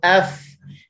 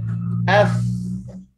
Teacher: hujung gigi atas dia akan kena dengan bibir bawah yang basah. Yang kedua, dia akan pangkal lidah terletak, dia tidak terangkat sebab dia huruf nipis.